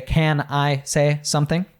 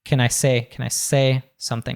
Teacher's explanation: he reduces CAN to kin